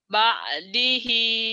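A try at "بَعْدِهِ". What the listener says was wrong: Nah, itu kurang neken tuh, kurang ke tenggorokan. Kirang. Ber. Jadinya di situ ada kayak nelen ludah ya. Kayak nelen sesuatu. Bar gitu. Bardihi. kurang Latin nanti hutang ya. Hutang ain. Kurang, kurang, kurang.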